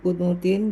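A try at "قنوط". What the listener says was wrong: ko bacanya bukan kunut ya, konut.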